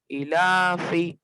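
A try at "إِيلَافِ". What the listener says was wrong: इलाफी, लंबा कीजिए। रुक रुक के नहीं बोलना है। इलाफी।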